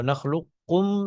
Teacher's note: اسی طرح سے علم نخلقکم میں بھی ادغام ناقص جائز ہے کہ آپ قاف کی صفت استعلاء اور صفت اطباق وغیرہ کو آپ باقی رکھتے ہوئے آپ ادغام کریں